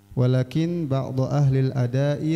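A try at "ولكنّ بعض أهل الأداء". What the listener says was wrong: Walakin apa walakinna silakan. Kalau walakinna ba'du, kalau walakin ba'du.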